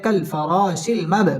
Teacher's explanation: বা কলকলার হরফ ধাক্কা দিয়ে পড়তে হবে।